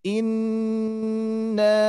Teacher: nun bertasdid harus ditahan lebih lama